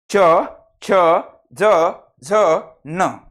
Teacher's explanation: यामधील जो घुमटाकार भाग आहे याला म्हणतात तालू। आणि ज्या वर्णाचा उच्चार करताना जिभेचं टोक हे तालूला स्पर्श करते त्याला म्हणतात तालव्य वर्ण।